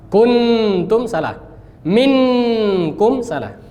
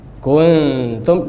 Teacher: posisi lidah berada di antara keduanya dan lebih dekat dengan makhraj huruf ikhfa setelah nun